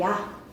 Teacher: 발음하는 동안 반모음에서 시작해서 단모음으로 가니까 입술 모양이나 혀의 위치가 움직여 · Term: 상향 이중모음